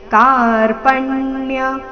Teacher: ಕಾ ಚೆನ್ನಾಗಿ ದೀರ್ಘ ಬರಲಿ, ಮುಂದೆ ಪ ಮೇಲೆ ಆಘಾತ